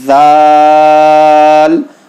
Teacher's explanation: زبان کی نوک دانتوں کے باہر نکال کر تب آپ کو پڑھنا ہے